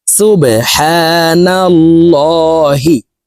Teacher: আল্লাহ শব্দের আগের হারফে জবর আছে এ কারণে এই লামকে ল বলে অর্থাৎ মোটা করে পড়ব